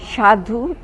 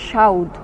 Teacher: খ অপনিহিতি সাধু থেকে সাউদ, স প্লাস আ প্লাস ধ প্লাস হর্ষ সাধু, স প্লাস আ প্লাস হর্ষ প্লাস ধ সাউদ। এ শব্দে ধয়ের সঙ্গে যুক্ত হর্ষ ধয়ের পরে উচ্চারিত না হয়ে ধয়ের আগে উচ্চারিত হয়েছে। এখানে হর্ষ এর অপনিহিতি হয়েছে।